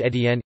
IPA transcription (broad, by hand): e.ˈtjɛn